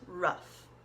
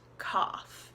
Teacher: In rough, we had like a U sound, rough. In cough, we have more of like an open ah sound, cough.